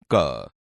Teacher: બાળ દોસ્તો, અહીં આપેલ કોષ્ટકમાં જુઓ. ક વ્યંજન કંઠમાંથી નીકળે છે અને ઓછા પ્રાણવાયુની જરૂર પડે છે, તેથી ક એ અલ્પપ્રાણ છે.